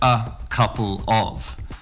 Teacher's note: so ah changes to a schwa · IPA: /ə kəplə/